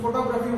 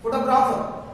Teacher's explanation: ఫోటోగ్రఫీ మీద ఉన్నటువంటి stress mark next ఇంకో ఫోటోగ్రాఫర్ లో వేరే దానికి షిఫ్ట్ అయిపోతుంది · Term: వర్డ్ స్ట్రెస్ షిఫ్ట్